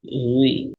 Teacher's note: বারিক মানে মুখটা স্বাভাবিক অবস্থায় থাকবে, গোল হবে না।